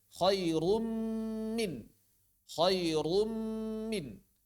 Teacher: ketika memasukkan huruf ke dalam mim, maka dipanjangkan mimnya · suara nunnya hilang 100% masuk ke dalam mim bertasydid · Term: idgham kamil